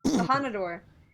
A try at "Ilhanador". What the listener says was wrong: None of you get the R rolling right. Ilhanador.